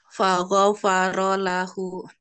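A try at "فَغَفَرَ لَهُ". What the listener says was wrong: Gho-nya kurang tebal, ro-nya kurang tebal, Bu. Faghafara lahu. Faghafara lahu.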